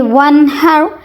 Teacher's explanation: ونحر نون کو اظہار کر کے پڑھیں گے. نون ساکن نون تنوین کے بعد جب بھی حرف ہلکی میں سے کوئی حرف آ جائے تو وہاں نون کی آواز کو ہم ظاہر کر کے پڑھیں گے.